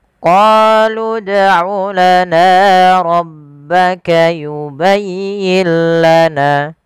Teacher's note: apabila ada huruf dal berharokat sukun, maka ia kita baca dengan bacaan qalqalah, harus memantul.